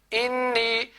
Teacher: یہ مشدد حروف ہے، نون تشدید والی ہے، اس کو ہم 2 دفعہ ادا کریں گے، ایک دفعہ اس حمزہ کے ساتھ ملا کے اور دوسری دفعہ اس نون کو اکیلی بیٹا پڑھیں گے۔